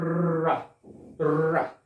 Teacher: वह व्यंजन जिनके उच्चारण में जीभ का अग्रभाग वायु के मार्ग में अवरोध उत्पन्न करता है, लेकिन वायु के वेग के कारण कांपने लगती है। जो जीभ का आगे वाला भाग है ना, वो कांपने लगता है जब ये वाला व्यंजन आप बोलेंगे। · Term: प्रकंपित व्यंजन